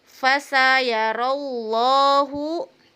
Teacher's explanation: lam jalalah tafkhim karena dibaca tebal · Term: lam jalalah tafhim